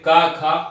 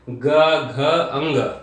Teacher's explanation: जैसे का, खा अघोष है, ग, घ, अंग ये क्या है, ये सघोष है